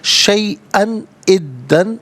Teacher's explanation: नाज़रीन शैअन में हमज़ा पर दो ज़बर की तनवीन के बाद हर्फ़ हल्की हमज़ा आ रहा है, तो यहाँ तनवीन को इज़हार के साथ पढ़ा जाएगा, गुन्ना वगैरह नहीं किया जाएगा